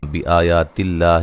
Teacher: لفظ اللہ کو باریک پڑھیں گے، اس سے پہلے حرف پر زیر ہے